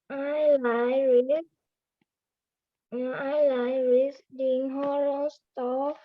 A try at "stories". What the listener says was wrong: Stories, not store. Stories.